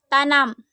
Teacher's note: Bunyi N dengan ciri-ciri hidup, nasal, apikoalveolar